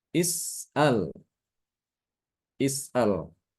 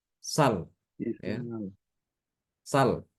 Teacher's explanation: hamzahnya itu dipindah ke Sin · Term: dinakalkan